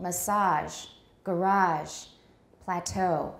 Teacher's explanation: we tend to stress french imports french loan words in american english on the final syllable